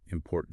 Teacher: And the second T, the one at the very end, important T, that's the stop T. The tongue goes up, stops the air, but doesn't release.